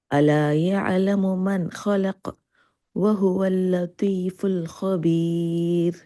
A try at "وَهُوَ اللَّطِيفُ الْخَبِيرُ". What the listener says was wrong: لطیف الطا کو موٹا کریں لطیف الخبیر